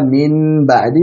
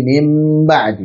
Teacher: ini kan nun sukun ketemu dengan ba, kok jadi mim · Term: iklab